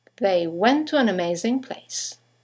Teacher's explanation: 2 words, one ending with a T, the next one starting with a T, they run into each other · you have the semi-vowel W that connects the vowels to and an to each other.